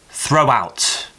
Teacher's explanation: if you look at the word throw phonetically, it actually finishes with a diphthong, O. A diphthong is a combination of two vowel sounds.